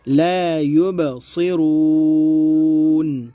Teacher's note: با میں قلقلہ ہوگا اور صاد پر ہوگا اور را بھی پر ہوگا, ٹھیک ہے.